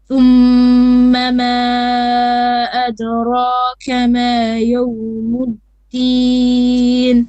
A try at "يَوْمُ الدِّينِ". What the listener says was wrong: Make your ya a bit more flat. Don't say yawm, but it's ya. Yawm instead of yawm. If that makes sense. Yawmu, okay? No mat.